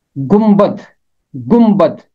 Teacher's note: यहां भी नून और बे इकट्ठे हैं। नून की आवाज मीम में बदल जाएगी और बे की आवाज कायम रहेगी · उसूल ये है कि जब नून और बे इकट्ठे होते हैं तो नून की आवाज़ मीम में बदल जाती है और बे की आवाज़ कायम रहती है। यहाँ नून और बे मौजूद हैं। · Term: नून बन जाएगा मीम